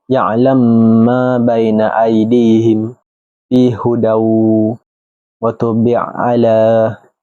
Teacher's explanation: Imam Susi membaca dengan idgham pada huruf pertama ke dalam huruf kedua